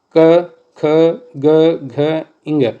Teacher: कंठ से। तो क वर्ग जितना भी है वो पूरा कंठ होता है। इसकी ध्वनि आप उच्चारण करेंगे क वर्ग को तो कंठ से निकलेगी।